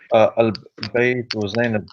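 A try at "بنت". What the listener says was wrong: It doesn't say Bayt.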